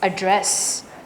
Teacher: The little mark you see between thewah and the dress that shows >> that the stress is going to fall after that little mark you see. So the stress is on dress